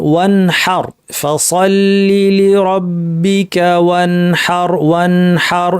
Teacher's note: নুন সাকিন হায়ের উদাহরণ, ওয়ানহার, ফাসাল্লি লিরাব্বিকা ওয়ানহার, ওয়ানহার। নুন সাকিনের গুন্নাকে স্বাভাবিক অবস্থায় রেখে, বর্ধিত না করে স্বাভাবিক দৈর্ঘ্যে রেখে আমরা পড়লাম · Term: ইজহার